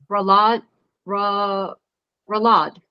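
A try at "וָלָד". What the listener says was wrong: No, that's a vav in front.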